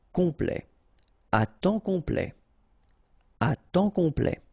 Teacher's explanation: Temps, and then complet, okay, here a T at the end will open it, the sound of the E, so E, okay, ple, complet, complet, and then OM is nasal here, just because you get your P after that, so it's on, complet.